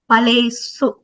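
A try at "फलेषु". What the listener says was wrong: Paleshu. The sh should be clear, Bhagini. Sh.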